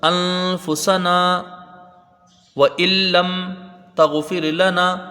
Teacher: تو یہاں پر تھوڑا سا اپنے کو ٹھہرنا ہے، ایک الف کی مقدار اس کی رہے گی، مد اصلی ہے یہاں پر